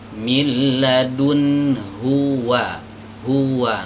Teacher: huruf wawu ini adalah huruf yang keluar dari dua bibir tapi dikumpulkan dimajukan ya dalam kondisi apapun huruf wow Ini bibirnya harus diumumkan jadi